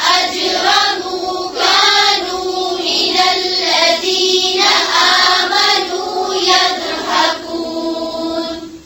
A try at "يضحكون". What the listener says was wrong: फिर से पढ़ें पूरी आयत को और दाद के ऊपर कलकला नहीं करें.